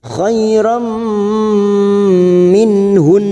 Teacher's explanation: nun sukun bertemu ha idhar halqi dibaca jelas